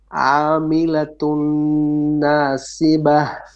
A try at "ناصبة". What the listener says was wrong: Sad is heavy here. ناصي. Make it a little bit heavy.